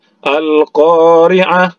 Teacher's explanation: Kalau dia wakaf Al-Qari'ah berbunyi huruf H. Kalau dia wasol berbunyi huruf ta. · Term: ta marbutoh